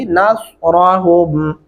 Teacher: نصرہم، یہاں پہ بھی دھیان رکھنا ہے، نس سین نہیں ایڈ کرنا، نس سواد پڑھتے ہوئے پھر ہمارے ہونٹ گول ہو جاتے ہیں، تو سواد لکھا ہوا ہے تو لہٰذا ہم یہاں پہ سواد ہی پڑھیں گے، نصرہم وہم لہم جند محضرون۔